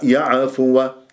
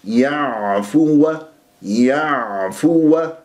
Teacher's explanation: اي لا ان يعفوا عنهم العين في كلمه يعفو وساكنه و هذه العين تحتاج منك الى دربه ان تنزل الى وسط الحلق هذا المكان وان تحس بانزعاج في المخرج وانه كانه عم تبلع شيء وان يجري فيها صوت فتره زمنيه بسيطه لانها من احرف التوسط للعمر ليش اذا ما طبقت هذه الامور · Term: العين العربيه الفصيحه